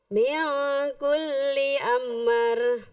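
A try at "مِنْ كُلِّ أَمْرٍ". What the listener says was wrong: No, lebih cepat. Min kulli amr. Lebih cepat. Min kulli amr. Amr.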